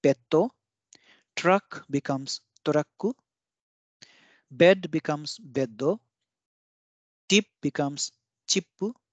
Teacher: foreign words that have a short vowel followed by a consonant will have a double consonant in Japanese version of the word